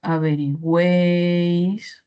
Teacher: Vocal abierta en medio, con mayor fuerza de voz, acompañada de dos vocales cerradas. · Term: triptongo